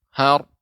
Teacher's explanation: Har, karena ra-nya dinaikkan ke atas. Apa lidahnya? Lidahnya dinaikkan ke atas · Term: ra tebal